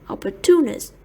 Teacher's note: Opportunist is stressed on the third syllable.